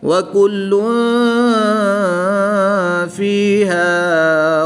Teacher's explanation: دو پیش کی تنوین کے بعد فا حروف اخفا میں سے ہے تو یہاں پر اخفا ہوگا یعنی غنہ زمانی کر کے پڑھیں گے